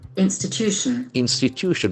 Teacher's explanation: Institution, there are 4 syllables and the accent falls on the 3rd syllable.